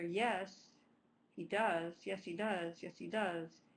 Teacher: you could actually leave the H in or drop it depending on how quickly you're saying it